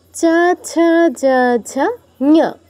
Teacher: চ বর্গের এগুলো হচ্ছে আমাদের উচ্চারণ তালুতে